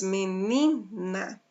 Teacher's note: sílaba forte no ni. Então, essa palavra pode ser classificada como paroxítona.